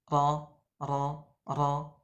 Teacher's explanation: bergetarnya ujung lidah saat mengucapkan huruf ro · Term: sifat takrir, Sifat takrir